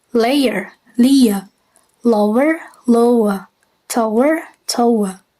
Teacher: Malaysian often insert a Y or W between the second and the third element of the triphthong.